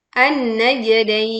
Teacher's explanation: pantulkan jim sukun dengan suara yang jelas dan miring